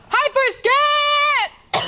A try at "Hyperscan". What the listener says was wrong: No, you got to hold it out longer.